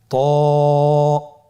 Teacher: জিহ্বার আগা সামনের উপরের দুই দাঁতের গোড়ার সঙ্গে লাগিয়ে উচ্চারিত হয়।